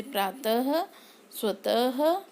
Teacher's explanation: विसर्ग वर्ण के बाद में लगता है जिसका उच्चारण अह की तरह होता है।